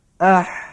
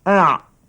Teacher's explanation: Makhraj ha terkadapan sedikit daripada makhraj ain cikgu. · Dan bezanya ha terlepas udara dan ain tertahan udara.